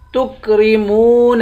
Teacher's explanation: میم کو واو سے ملا کر واو کو ایک الف کی مقدار کھینچ کر پڑھیں گے